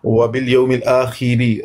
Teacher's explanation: را کے نیچے زیر ہے، مرقق پڑھیں گے